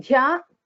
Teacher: in Dhya, Dha is a Mahaprana